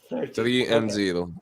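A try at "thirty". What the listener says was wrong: the the th sounds there's no th sound in in um in U Italian right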